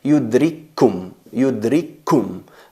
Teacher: Veis ahí que hay dos kaf, una muda y otra con damma, pero a la hora de pronunciarlo se escribe con dos, pero a la hora de pronunciarlo se convierte en yudrikkum, yudrikkum. No se escuchan dos kafs, simplemente se oye o se escucha una. Fusionamos la muda, la sakina, en la que lleva vocalización, y eso es idgham al-mutamathilain.